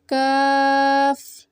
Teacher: जैसे काफ काफ की अदायगी में जुबान की जड़ को तालू पर लगाकर बारीक आवाज में पढ़ें